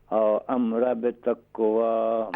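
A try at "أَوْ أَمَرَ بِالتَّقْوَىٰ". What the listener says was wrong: او امر، میم کے اوپر بھی زبر ہے. بالتقوی.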